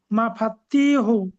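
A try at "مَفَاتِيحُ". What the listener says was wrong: তাটাও মাদ্দা আছে। ফাটা আলিফ মাদ্দা, তাটা ইয়া মাদ্দা। মাদ্দা সর্বদা একালি পরিমাণ টান দিয়ে পড়তে হয়। হে নয়, হা। ঠিক আছে, এগুলো একটু লক্ষ্য রাখবেন, মাদ্দাগুলো লক্ষ্য রাখবেন একটু।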